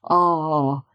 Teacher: It's a big, open ah, like when you go to the dentist and say ah